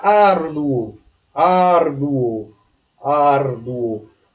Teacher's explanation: O U é uma semivogal. E o O já é uma vogal. Aqui é um ditongo crescente.